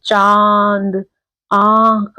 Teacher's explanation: और इसका उच्चारण उच्चारण मतलब हम इसको कैसे जब हम बोलते हैं चंद्रबिंदु के जो शब्दों को हम बोलते हैं तो वो नाक और मुंह दोनों से इनका उच्चारण होता है। जैसे चांद आंख आप देखोगे नाक से भी आवाज आ रही है और मुंह से दोनों से आ रही है नाक से। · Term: अनुनासिक